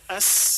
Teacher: Yang harusnya dibaca as, dibaca ath, karena menyentuh gigi atas.